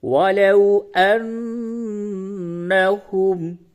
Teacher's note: نون مشدد ہے، یعنی نون پہ تشدید ہے، یہاں پہ آپ غنہ کریں۔